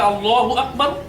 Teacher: আল্লাহ শব্দের দ্বিতীয় লামের আগে যদি জবর থাকে কিংবা পেশ থাকে, তাহলে আল্লাহ শব্দের দ্বিতীয় লামের উচ্চারণটা হবে পোর, অর্থাৎ মোটা করে।